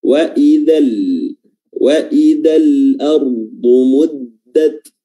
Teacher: Al-ardu huruf ra dia sifatnya tafkhim, tebal. Karena kasrah atau afwan karena dia sukun dan sebelumnya ada huruf yang berharokat fathah.